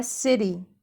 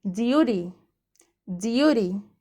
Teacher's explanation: والتي انا نطقتها هنا في كلمة city كأنها دي، لانه يعتبر الحرف التي جاي between two vowels، فعشان كده تحول لدي